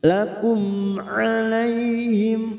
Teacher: jimhar sawi dibaca jelas na fathah diikuti Alif dua harakat jaalnaakum mim sukun bertemu Ain mim sukun dibaca jelas Idhar syafawi